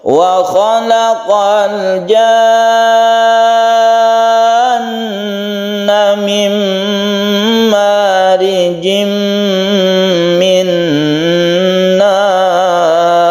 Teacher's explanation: Jadi kita panjangkan jannya dulu baru tasydid nun.